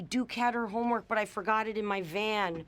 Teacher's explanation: She eliminated the H sound in her. Usually, if we're connecting a word that ends in a consonant sound with him, her, his, we can drop the H sound.